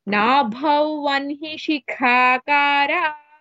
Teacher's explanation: Shikha kha is mahaprana. Akara ka is alpaprana.